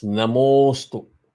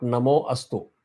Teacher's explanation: the way it is done is aha followed by a is replaced by o. So im plus o becomes mo, namo.